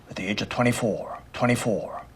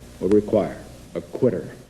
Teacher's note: Another thing he does, though, that's a little bit subtler is there's a little bit of what we call a pharyngeal squeeze, which is a kind of tension or squeezing, narrowing in the throat, back sort of behind the various parts of the tongue and mouth. And he does that especially on R sounds after vowels.